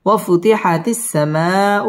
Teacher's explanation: ঠোঁট গোল করে উচ্চারণ করতে হবে ওয়াফুতিহাতিস সিন তাসদীদ ওয়ালা হরফ সামাউ মধ্যে মুত্তাসিল চার আলিফ টান দিয়ে পড়তে হবে